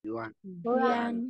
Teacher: Giống như là uyên của tiếng Việt ấy, uyên nhưng mà tròn môi lên